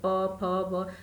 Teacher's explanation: प वर्ग के सारे वर्णों के उच्चारण में हमारे ओठ जो है आपस में सटते हैं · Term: ओष्ठ